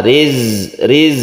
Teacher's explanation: membentuk sihir dan Zak itu sihirnya itu tertinggi maksudnya desisnya itu harus terasa riz-z Riz jadi ini bukan Qalqalah jangan di qolqolahkan